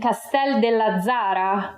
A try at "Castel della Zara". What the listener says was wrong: It's Castella Zara, non c'è il del.